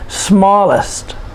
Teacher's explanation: It's a 2-syllable adjective, and we put the stress on the first syllable.